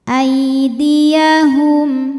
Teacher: Karena ya sukun didahului baris fathah maka dibacanya cukup dilunakkan atau dilembutkan. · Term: huruf lin